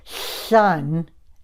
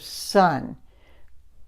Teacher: a lateral lisp with the /s/, with the “s” sound: the air escapes over the sides of the tongue rather than through the front of the mouth